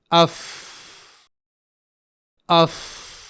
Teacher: ایک باہری حصہ جو سوکھا ہوتا ہے اور دوسرا اندرونی حصہ جو گیلا ہوتا ہے. تو حرف فا ثنائے اولیاء کی نوک اور نچلے ہونٹ کے اس اندرونی اور گیلے حصے سے ادا ہوتا ہے